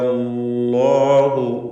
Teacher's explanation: അല്ലാഹു തഫ്ഖീം ചെയ്ത് ലാമിനെ ഉച്ചരിക്കുക. ഇസ്മുൽ ജലാലയിൽ വരുന്ന ലാം തഫ്ഖീം ചെയ്ത് ഉച്ചരിക്കേണ്ടതാണ്